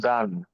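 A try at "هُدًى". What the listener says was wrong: হুদান নয়, হা পেশ হু দাল দু জবর দান, হুদান। হুদান কোনো টান হবে না। হুদান। চলেন দালের উপরে দু জাবার তানবিন এসছে, কি বলবেন দালের উপরে? হ্যাঁ,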